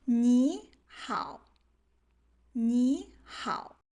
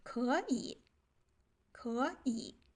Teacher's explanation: then we will automatically change the first low tone into a second tone, the up tone, so it becomes easier to read.